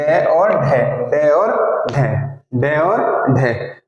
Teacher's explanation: कहां से बोलेंगे मूर्धन्य से जीभ के वाले हिस्से से।